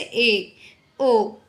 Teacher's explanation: अर्ध समृत, यानी कि हाफ क्लोज्ड, जिसमें माउथ जो है वो आधा बंद होता है, जैसे ए, ओ, है ना।